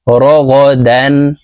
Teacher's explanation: তানুইনের পরে ইজহারের হরফ হা আসছে তাই গুন্নাহ ছাড়া স্পষ্ট করিয়া পড়বো